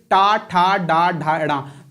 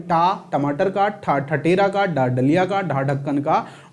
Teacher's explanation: जब आप ये बोल रहे थे तो आपकी जीभ कहां लग रही थी, तालु के नीचे वाले प्लेस पे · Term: मूर्धा